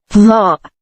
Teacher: It sounds like the letter Z, but it is much thicker sounding.